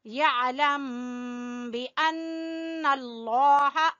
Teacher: यहाँ पे गुन्ना करेंगे, इख्फाए शफवी है